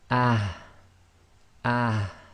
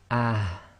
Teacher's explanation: So not too heavy, you've got no air actually coming right up through the front of the mouth. It's from the bottom of the throat only. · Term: soft ha